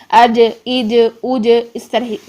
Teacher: جب زبان کا درمیان اوپر تالو کے ساتھ لگائیں گے، فوراً ہٹ کرنے کے بعد ہم واپس اس کی آواز کو پلٹ کر لے کر آئیں گے، جس سے ہمارا قلقلہ ہوگا جیم میں